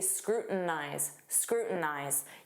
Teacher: Native speakers will often use a flap T and say scrutinize.